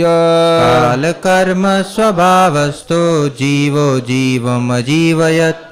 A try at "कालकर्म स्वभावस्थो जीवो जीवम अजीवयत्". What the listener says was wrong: Very good.